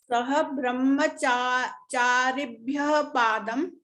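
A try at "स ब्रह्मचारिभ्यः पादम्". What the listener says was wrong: not Saha, it is Sabrahma.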